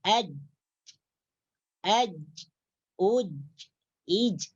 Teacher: pertengahan lidah kita atau daun lidah kita itu menyentuh langit-langit di atas. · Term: huruf jim